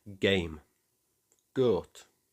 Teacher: It's the robust, no-nonsense G you make deep in your throat. When you say it, you can often feel your tongue pressing against the back of your mouth, then releasing with a solid G. · you can often feel your tongue pressing against the back of your mouth, then releasing with a solid G. It's a much more grounded, forceful sound than its soft counterpart. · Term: hard G